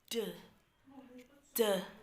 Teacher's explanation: Jadi, in the second affricate sound of English, the first sound is d. This sound is produced with the tip of the tongue placed in the alveolar, right? The airflow is obstructed and the release making the vocal fold vibrate.